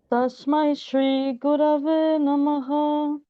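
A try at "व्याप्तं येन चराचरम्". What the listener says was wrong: So you have a very Western approach of rising tone, which like when you chant the syllables, Baba Jivyapi Yat Sarvam, going up, up, up.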